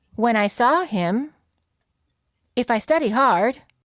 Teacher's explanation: raise your pitch at the end of the phrase